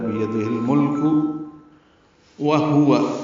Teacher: دونوں واؤں ہونٹوں کی نا تمام گلائی سے ادا کریں گے، جلدی پڑھیں گے۔